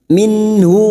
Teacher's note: Nun sukun bertemu ha, idhar halki, nun sukun dibaca jelas tanpa mendengung.